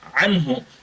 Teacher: ছয়টি হরফ রয়েছে এই ছয় হরফের কোন একটি যদি আসে তাহলে উক্ত নুন সাকিন বা তানভীন টাকে গুন্নাহ ছাড়া স্পষ্ট করে পড়তে হবে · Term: ইজহার